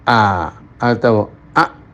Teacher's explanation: Untuk hamzah a, tenggorokan mencekik. · Orang mengucapkan a atau a, nah itu tenggorokannya disempitkan. Berarti dinding tenggorokan dengan dinding kanan kirinya menyatu atau mencekik atau mendekat